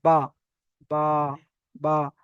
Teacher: দুই ঠোঁট, দুই ঠোঁটের ভিজে অংশ থেকে বা উচ্চারিত হয়